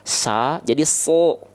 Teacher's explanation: pangkal lidah kita naik ke atas nih Nah itulah yang membuat bunyi vokal a ketika fathah sa jadi so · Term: Huruf tebal